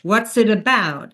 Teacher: since this is not a yes or no question, we drop the pitch.